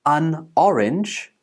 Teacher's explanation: sounds like an orange when we are speaking fluently it's because we connect the last consonant sound to the next vowel sound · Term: Lincoln